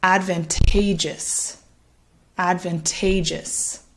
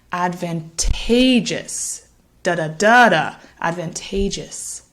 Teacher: hopefully you can hear that stress falling on the third syllable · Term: primary stress